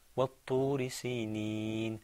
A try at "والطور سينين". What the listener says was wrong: Okay, what's the difference between وطوري and وطوري? Well, the ta is stressed, okay, in the first one. In the second one, it's not. There's no shadda. So you say وطور سينين.